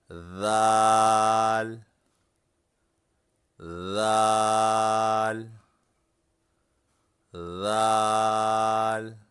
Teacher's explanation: ذال کو ادا کرتے وقت زبان کی نوک اوپر کے سامنے والے دانتوں کی نوک پر رکھیں۔